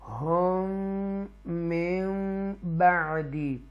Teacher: یہاں ڈبل میم ہے تو ادغام ہوگا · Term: ادغام شفوی